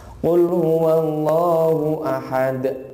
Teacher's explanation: Jadi kalau lafaz Allah itu jangan panjang-panjang, karena itu hanya 2 harokat ya.